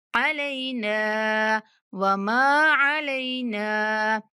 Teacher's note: नून को 3 सेकंड तक खींचेंगे।